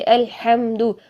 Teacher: ہا کو اگر ہم ٹھنڈی سانس کے ساتھ نہیں نکالتے ہیں تو اس کا میننگ بالکل چینج ہو جاتا ہے، یعنی دوسری ہا نکال دیتے ہیں الحمدو، حمدو اس کا مطلب ہوگا تمام دھواں، جبکہ ہم کیا اس کا میننگ بننا چاہیے تھا الحمدللہ، تمام تعریفیں اللہ ہی کے لیے ہے، لیکن الحمدو پڑھیں تو سارا کا سارا میننگ چینج ہو جاتا ہے۔